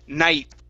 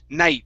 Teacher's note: your tongue is going to stop at the top of your mouth okay you're going to pronounce half of the T sound